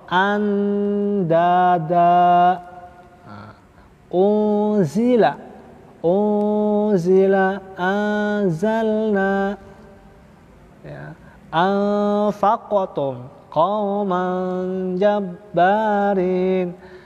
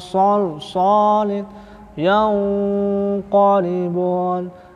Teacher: Mereka dengungnya, hunahnya tipis, tarkik, ya.